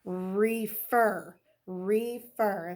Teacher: you can hear the accent would come on the second syllable of that word. All right, so at this point, we do have that accent on the second syllable.